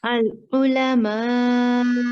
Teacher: Okay, no dhamma sound while stopping. It is al-ulama with slight jerk on hamza.